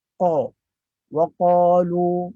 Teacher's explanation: Kesalahan umum yang berlaku adalah ketika mana kita membaca qaf dengan membulatkan bibir.